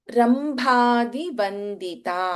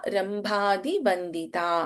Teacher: ಇನ್ ರಂಭಾದಿಬಂದಿತ ವಿಹಾವ ಭಸ್ ಮಹಾಪ್ರಾಣ